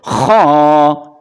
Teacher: خواہ کو پڑھتے ہوئے ہونٹوں کو گول نہیں کرنا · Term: خا کو موٹا